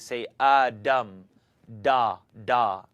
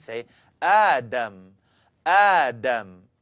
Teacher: Make the dal into a D, and your tongue's going to kind of curl up and hit the top of your mouth. This is what I don't want you to do, is say Adam, da, da.